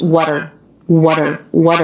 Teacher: that's a flat T linking